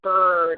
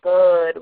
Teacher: saying bird with a strong R instead of bud with a deroticized R